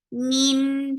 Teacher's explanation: Min for kasra give e sound and attached with noon. And this is idgham with gunna. So keeping the sound in your nose for a longer time